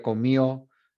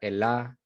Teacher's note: omisión de la D en posición intervocálica